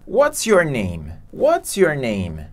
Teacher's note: você vai começar com a entonação da voz lá no alto e vai descendo ao longo da pergunta